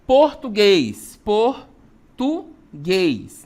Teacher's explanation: A sílaba tônica é a última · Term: oxítona